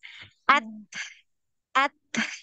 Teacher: untuk huruf ta ini tidak ada aliran suara, dia tertahan aliran suaranya, ya. Dia yang mengalir itu nafas.